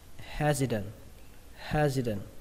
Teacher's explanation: Có một cách đọc nữa, đó là các bạn đọc âm t này thành âm d